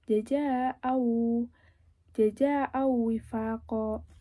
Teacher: ini sukun disertai dengan gunnah 2 harokat. Nah, ini gunnahnya jelas. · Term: nakis